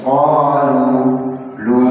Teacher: wakafnya di qalu jangan jadi kepanjangan, cukup dua saja. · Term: dua harakat